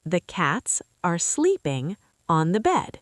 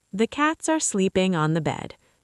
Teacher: Every word the same, no up and down. It sounds boring and unnatural.